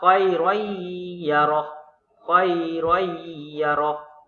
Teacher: Itu adalah idgham bigunah dengan dengung.